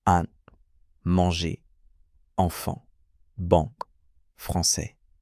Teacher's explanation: La particularité de ces sons, c'est qu'ils sont produits en laissant passer de l'air non seulement par la bouche mais aussi légèrement par le nez · Pour le son 1, imaginez que vous ouvrez légèrement la bouche et que l'air circule à la fois par la bouche et par le nez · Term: voyelle nasale, une voyelle nasale